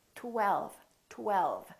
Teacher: the tongue goes up again for the L LL and then the lower lip touches the upper teeth for the V